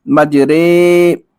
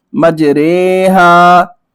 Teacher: امالہ کی را کو اردو کے لفظ قطرے کی را کی طرح پڑھیں، یعنی ری نہیں بلکہ رے پڑھیں